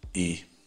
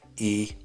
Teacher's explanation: и он более напряженной и отличие от русского и и так русская и французская и слышите немножко на тон выше интенсивнее и я бы сказал четче